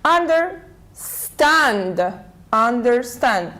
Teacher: we put the stress on the second part of the verb